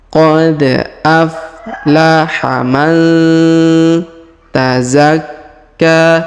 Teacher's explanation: Perhatikan nun sukun bertemu ta maka kita dengungkan dan kita samarkan ya. Biasa disebut ini hukum tajwid ikhfa ya.